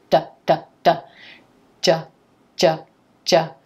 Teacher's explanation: for the j sound, the tip of the tongue is rising up and touching the roof of the mouth, just like if you make a D sound. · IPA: /ʤ/